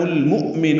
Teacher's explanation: مؤمن میں حمزہ ساکن جھٹکے سے ادا ہوتا ہے